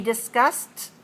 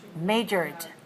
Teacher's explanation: Discussed has a voiceless ending, no voice, and majored, the second ending, d is voiced. You feel the d.